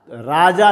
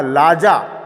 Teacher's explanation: र ध्वनि इसमें है ही नहीं। र के स्थान पर सर्वत्र ल पाया जाता है।